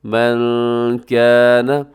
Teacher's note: قل من کان، یہاں نون ساکن کے بعد کاف ہے تو یہاں پر آپ نے اخفا کرنا ہے، آواز کو ناک میں چھپانا ہے